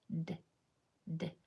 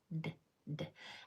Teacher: All the sound for D is is just a little clip of your tongue off the top of your mouth